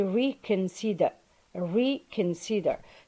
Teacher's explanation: So the first R is pronounced simply because it is in the onset position.